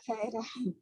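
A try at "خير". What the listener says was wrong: بس را کو موٹا کرنا ہے. را را را را.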